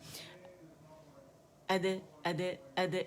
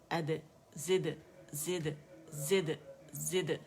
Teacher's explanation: दाल के मखरज पे जाएंगे, जैसे हम कहते हैं ना अद अद अद, ऐसे टच करके फ़ौरन हटा देना है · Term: कलकला